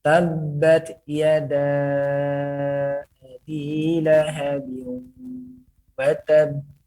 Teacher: Dia bertasydid namun tidak ditahan.